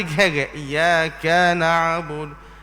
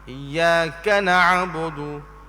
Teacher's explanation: Orang kata iyyaka tu iyyaka na'budu. Ka tu pendek saja, tidak ada mat pun.